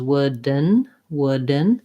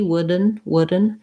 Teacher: to be mostly just a syllabic n sound wooden wooden and i'm going to kind of swallow this d again using more of my stop d versus wooden wooden i can say it with a release d